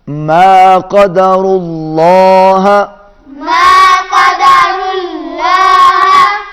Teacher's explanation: ماں کی آواز ناک میں نہیں جائے گی اور اللہ کا لام موٹا ہوگا۔